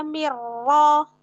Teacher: Mirro ada nun sukun ketemu ro. Idgham bila ghunah.